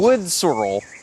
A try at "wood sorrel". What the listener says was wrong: Sorrel. You're putting the emphasis on the wrong syllable.